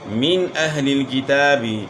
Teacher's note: نون ساکن کے بعد حروف حلقی میں سے حمزہ آ گیا ہے تو یہاں غنہ نہیں ہوگا بلکہ اظہار ہوگا